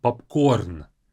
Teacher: in Russian the stress is on the last syllable